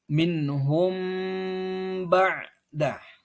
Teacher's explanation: Bagaimana cara membaca adalah mensamar-samarkan bacaan mim sukun ketika bertemu dengan ba sambil sedikit menahan bacaan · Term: ikhfa syafawi